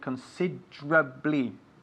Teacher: We write considerably, considerably, but we pronounce it considerably. So the E, la E en medio, consider, is lost. We just say considerably